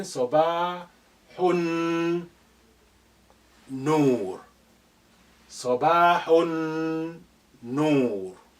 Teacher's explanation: Alif is silent for the same reason, because it's not at the beginning. Lam is silent here because noon is your sun letter. It's carrying shadda. So therefore, the sukun on lam of al has been removed.